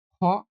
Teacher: অর্থাৎ শ্বাসবায়ুর প্রয়োজন হয় বেশি শ্বাসবায়ু প্রয়োজন হয় তাদেরকে বলা মহাপ্রাণ বর্ণ